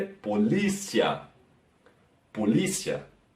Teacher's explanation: Se nota que la última A hay una queda, una baja